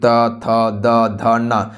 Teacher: त थ द ध न इसका उच्चारण किससे होता है, दंत से होता है